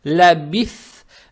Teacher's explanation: Далее стоит буква ба с касрой, лаби. Далее стоит буква са, она межзубная, ее надо правильно произносить с сукуном. Получается лабис.